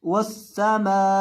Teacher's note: वक़फ़ की हालत में हमजा को साकिन कर देना है।